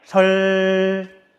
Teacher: 혀끝이 안 떨어지고 양옆으로 소리가 나가는 거 느껴져요? 그럴 때는 L 발음이 난대요.